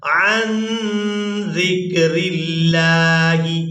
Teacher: زال کو نرمی کے ساتھ ادا کرتے ہوئے کاف ساکن کے ساتھ ملائیں گے